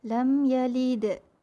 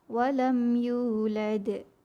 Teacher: Huruf dal bertanda sukun dan dal bertanda sukun ni. Dekat sini ada dua qalqalah, iaitu qalqalah sughra kecil dan qalqalah kubra besar.